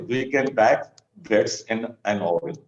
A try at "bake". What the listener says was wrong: Bake. Bake is how we pronounce it. So it's not back, it's bake. B-A-K-E is bake. Bake. ek kehte hai, ek, that's a bake. Yeah, that's how the similar sound. Ek, bake.